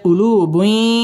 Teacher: ইদগামে বা গুন্না গুন্না সহ মিলিয়ে পড়তে হবে